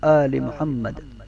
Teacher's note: محمد کے میم میں ہمیشہ غنہ ہوتا ہے